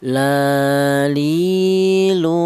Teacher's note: huruf lam keluarnya huruf berasal dari ujung lidah menyentuh langit-langit mulut